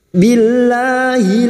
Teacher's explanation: lam jalalah yang didahului kasroh kita baca tarkik atau tipis